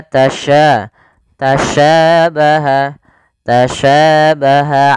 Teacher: cara pelafalannya dari tengah lidah kita karena makhrajnya dari tengah lidah Sya dan Sya memiliki sifat namanya tafasyi tafasyi itu intisarusuti fil